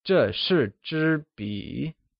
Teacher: 笔 is pronounced using a falling, rising tone, meaning pen